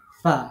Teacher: নিচের ঠোটের পেটের সাথে কি উপরে দুই দাঁতের আগা লাগে